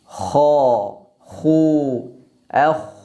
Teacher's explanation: kecil itu anak teka lidah ke situ terangkatnya bagian akar lidah karena terangkatnya bagian akar lidah ini maka keluarlah suara yang tebal